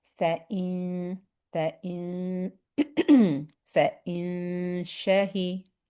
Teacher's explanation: we make the sound of the noon in our nose.